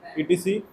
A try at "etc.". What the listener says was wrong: ETC नहीं, etc.